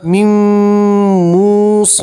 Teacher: نون ساکن کو میم میں ملا دیں گے اور ایک الف کے برابر گننا کریں گے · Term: نون ساکن کا ادغام